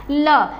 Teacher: पार्श्विक व्यंजन कहते किसे हैं, पहले उसको समझ लीजिए कि पार्श्विक व्यंजन यानी जिस वर्ड के उच्चारण में जीभ जो है वो ऊपर तालु को टच होती है और उस वर्ण के उच्चारण में जो हवा है वो हमारे मुख के बगल से, यानी जब हमारी जीभ ऊपर बैंड होगी तो जो बगल की जो साइड है उधर से हवा निकलती है, तो इसलिए इसको पार्श्विक व्यंजन कहते हैं।